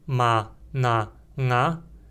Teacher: três nasais ma na nga sem uma nasal palatal